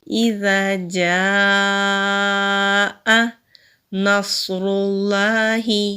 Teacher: نون کو صاد سے ملائیں گے، صاد مستعلیہ حروف میں سے ہے، مستعلیہ کہتے ہیں موٹے حروف کو، تو صاد کو موٹا پڑھیں گے